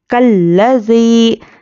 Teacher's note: یا پر جزم اور اس کے پہلے زیر یا مدہ، اس کو ہم ایک الف کے برابر کھینچ کر پڑھیں گے